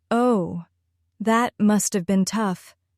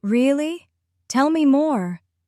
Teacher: Notice how your voice rises slightly in curiosity and falls gently in care.